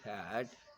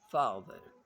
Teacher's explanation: The tongue is positioned low in mouths. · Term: Low vowels